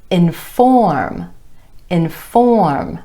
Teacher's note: Our emphasis is on the OR vowel sound in the 2nd syllable